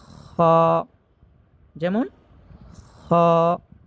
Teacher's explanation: খ উচ্চারণ করতে হবে হলকের শেষ হইতে। 3 নম্বর মাখরাজ।